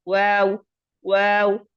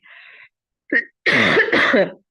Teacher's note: واو دونوں ہونٹوں کو گول کرنے سے ادا ہوتا ہے